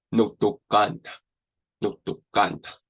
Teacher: I'm kind of adding a silent A at the end.